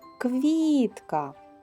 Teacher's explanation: в слові квітка наголошений склад кві перший склад